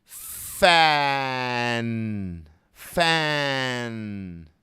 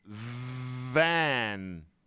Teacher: with no voice but now if I start all with voice if I say fan but I give voice to the F now it's not fan it's van